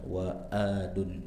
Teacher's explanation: tengah-tengah tenggorokan jangan dibaca mirip hamzah